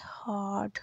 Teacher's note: और एच जो है एक ऐसा फ्रिकेटिव है जो अनवाइस्ड होता है